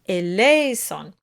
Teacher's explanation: The accent of the word is on le, eleison. So the Z is a voiced consonant and it can cause too much emphasis.